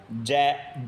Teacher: आप बोलते हैं तो अपनी जीभ जाती है ऊपर तालुए के अंदर मतलब तालु को स्पर्श करती है जीभ